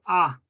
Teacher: in swedish is ah and no a nothing else it's a pure ah it's like when you go to dentist ah and then you